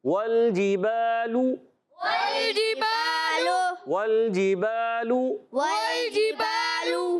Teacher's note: बा अलिफ ज़बर बा, अलिफ मद्दा है, एक अलिफ खींच कर अदा करेंगे। लाम पर पेश आने की वजह से लाम भी जब अदा होगा होंठ गोल हो जाएंगे। · वाव को लाम से मिलाना है, लाम को हिलाना नहीं। वल जिबालु में वाव को लाम से मिलाएंगे, वाव में होठों की गोलाई रहेगी और जीम अदा होगा वस्ते ज़बान वस्ते तालु से, जीम शीन और या, ये 3 हुरूफ अदा होते हैं।